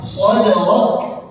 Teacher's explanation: ada huruf kaf itu punya sifat hams